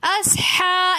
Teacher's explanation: اصحاب میں ہا کے اوپر کھڑا زبر ہونے کی وجہ سے ہم نے اس کو اصحا ایک الف کی مقدار کھینچ کر پڑھا